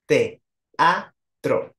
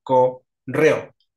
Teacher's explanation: vocales que al estar juntas tienen que separarse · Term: yatos